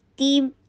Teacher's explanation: ہوگا، لیکن یہاں ہیوی ہے، تیم، تا کے نیچے کسرہ، پھر تا کی آواز سختی کے ساتھ ادا کر کے نیچے کسرہ کے لیے ای کی ساؤنڈ دیجیے ، تیم، تی کر کے اور پھر میم کے ساتھ ملائیے،